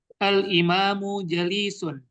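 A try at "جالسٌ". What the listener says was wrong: Jangan panjang jalisun.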